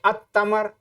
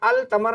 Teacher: اگر الف لام لگایا جائے تو یہ لام، اس میں جو لام ہے اس میں سائلنٹ ہوگا